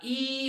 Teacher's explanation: ई म्हटलं की समोरचा भाग उंचावतो